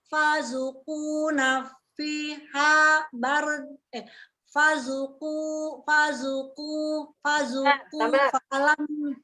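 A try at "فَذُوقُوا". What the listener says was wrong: Karena zu-nya Ibu belum pas itu, dari fa ke zu belum pas. Fazuku. Fazuku.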